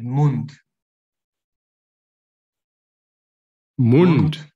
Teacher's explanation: al final de una palabra D se pronuncia como T